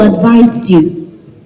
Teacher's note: the stress moves to the second syllable for advise